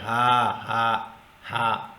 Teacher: زبان کے کسی بھی حصے سے اس کی آواز نہیں ٹکراتی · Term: عام ہا